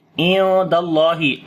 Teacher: ain we read from the middle of the throat.